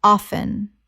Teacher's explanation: The T is silent in natural speech